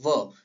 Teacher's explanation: और व, जब आप व का उच्चारण कर रहे होते हैं तो व में हमारे दांत होठों पे जाकर मिलते हैं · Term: दंत ओष्ठ